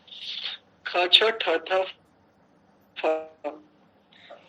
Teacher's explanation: वे सकार के समान महाप्राण प्रयत्न से बोले जाते हैं। इन दोनों में अंतर इतना बताएंगे ये, जो पहले वाला है यानी जो पांचों वर्गों के दूसरे वर्ण है वो सकार के समान, और उसके पश्चात जो पांचों वर्गों के चौथे वर्ण है, चतुर्थ वर्ण है, वो हकार के समान।